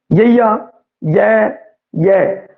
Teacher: आपां नूं महसूस हो रहा है कि आ तालवी दे विच आवेगा, क्योंकि जीभ है जो तालवी नूं तालू नूं एवें छो रही है